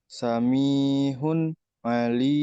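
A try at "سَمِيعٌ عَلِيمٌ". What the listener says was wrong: bukan ha. Ini ain samiun ya. Samiun ain.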